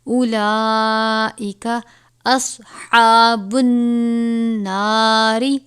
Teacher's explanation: صاد کو پر پڑھیں گے، ہا کو باریک پڑھیں گے · واو کے اوپر کوئی حرکت نہیں، واو کو نہیں پڑھیں گے